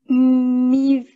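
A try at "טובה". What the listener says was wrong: Tova. Mime benziyor gibi ama tov. Bak böyle tova.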